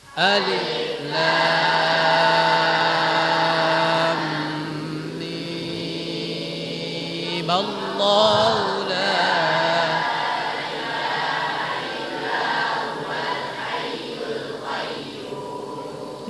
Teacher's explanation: baca mimnya enam harakat. Difathahkan langsung sambung dengan lafzul jalalah.